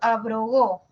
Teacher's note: La B es una oclusiva. La R es una vibrante, oclusiva, vibrante, y luego una oclusiva.